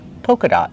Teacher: Use a long O like no and go. Polka dot. These are polka dot socks.